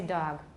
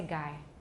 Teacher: We usually don't voice b-d-g when they're the first sound of an utterance.